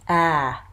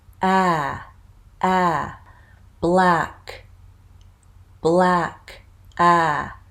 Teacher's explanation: And the last front vowel, a low front vowel, and it's ah. Now notice how open my mouth is.